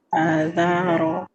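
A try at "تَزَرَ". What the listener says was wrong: Suaranya kurang didorong. Za. Nah, gitu. Iya, betul. Yang terakhir salahnya.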